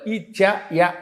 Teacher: ఇచ్చు యశానాం తాలుహు తాలవ్యంతో పలకాలి